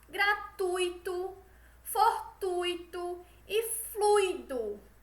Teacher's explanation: A tonicidade está nesse U, certo? No ditongo UI, certo?